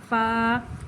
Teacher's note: اوپر کے دانتوں کے کنارے اور نچلے ہونٹ کے تر حصے سے لگائیں گے, اس کے وہاں سے ادا ہوتا ہے. یہ حروف شفویہ میں سے ہے.